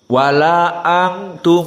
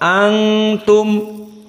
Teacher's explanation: nun di saat bertemu dengan ta berpindah yang asalnya dari lisan atroful lisan ma'al hanak al-a'la menjadi khaysum dan dua harokat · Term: ikhfa